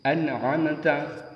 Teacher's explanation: ada nun sukun am ta ini nun sukun ini bertemu Ain berarti bacaan izhar harus agak jelas n-nya harus jelas · bacaan idhar, harus agak jelas, n-nya harus jelas, juga agak ngaget sedikit, an'amta. Kemudian huruf selanjutnya bertemu dengan ghain, min ghairin, min ghairin.